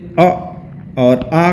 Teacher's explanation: अगर हम देखें तो कंठ से अ और आ का उच्चारण कंठ द्वारा किया जाता है